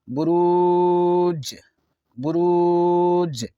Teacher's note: یہاں جیم حرف قلقلہ ہے، آواز لوٹے گی، اور یہاں زیادہ مد اس لیے ہوگا کہ سکون کے بعد حرف مد کے بعد سکون عارض ہے جس کی وجہ سے آواز لوٹے گی.